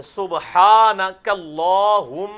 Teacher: میم پہ تشدید ہے تو غنہ ہوگا کم از کم ایک الف کے بعد